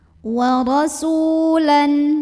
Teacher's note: sin yang dhammahnya kita panjangkan sepanjang 2 harokat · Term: mad tabi'i